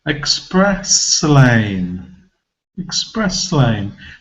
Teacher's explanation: I'm moving forward S and joining it to the beginning of the next syllable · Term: connected speech